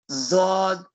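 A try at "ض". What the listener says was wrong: Not Zod. There is no Za here. This is a Bod. Bod. Bod.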